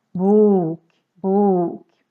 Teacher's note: when you see the word book in Swedish, you need to do the O really long.